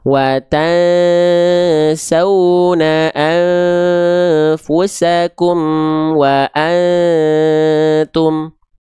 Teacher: Ketika hijau iksa berarti samarkan, dengungkan bunyi nun sukunnya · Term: ikhfa